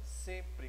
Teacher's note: eu não tenho a pronúncia do M. Ele nasalizou o E antecedente a ele.